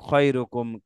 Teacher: আকারের উচ্চারণ হবে না, জবরের উচ্চারণ আকার উচ্চারণ হবে না। দুই ঠোঁট গোল করে যখন আমরা পড়বো তখন অটোমেটিকলি আকার ডিলিট হয়ে যাবে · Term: মোটা হরফ